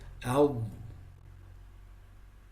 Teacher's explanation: with the dad, with the sukoon, there's additional noise that comes in the end, which is the istitala, or the elongation characteristic.